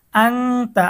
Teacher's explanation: আং তার মধ্যে হচ্ছে ইকফার গুন্না, নুন সাকিনের পরে ইকফার হরফ তা এসেছে।